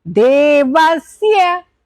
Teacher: दे is down और ये is upper